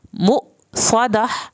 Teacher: यहाँ पे आखिर में हा की आवाज़ निकलेगी क्योंकि वक्फ हो रहा है। अगर वक्फ ना करते तो हम इसको मु स्वादातुन पढ़ते।